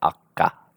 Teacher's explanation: In this case, the dative case ending meaning to or at. So if you have a t coming upon a ka, it will change to a ka also. So horse is at, atka, we say akka. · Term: regressive assimilation